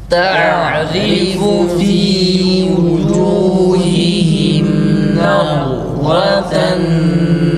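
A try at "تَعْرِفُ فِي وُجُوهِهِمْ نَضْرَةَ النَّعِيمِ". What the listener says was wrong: Dad harfini kalkale yapmayalım. Nad değil, kalkale değil. Nazraten naim.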